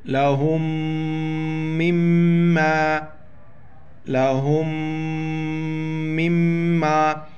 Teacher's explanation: یہاں پر دونوں میم پر جو ہے نا شد ہے، دونوں میم پر غنہ کریں گے